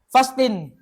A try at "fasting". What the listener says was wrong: Hindi yan fasting, hindi. Dapat abasa dyan, silent T. Silent T. Magiging fasin.